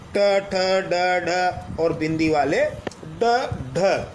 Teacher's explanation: इन व्यंजनों के उच्चारण में हमारी जीभ जो ऊपर वाले जबड़े का शीर्ष स्थान है जिसे हम मूर्धा कहते हैं उसे स्पर्श करती है और जीभ वापस झटके से बाहर आती है। इसे उछित व्यंजन कहते हैं। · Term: उच्छित व्यंजन